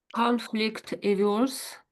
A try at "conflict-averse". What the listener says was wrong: Yeah, that was good,